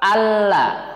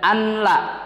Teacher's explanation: Hukum bacaannya adalah idgham bi ghairi gunnah atau idgham tanpa gunnah, tanpa dengung. Jadi bacanya jelas.